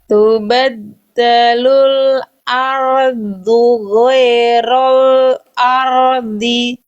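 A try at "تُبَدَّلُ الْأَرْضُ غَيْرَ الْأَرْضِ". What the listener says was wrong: Ro-nya masih Eropa ya. Lalu ya sukunnya kembali goe. Jangan goe tapi goi.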